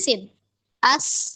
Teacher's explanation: Kalau sin dia hames ya nafasnya mengalir.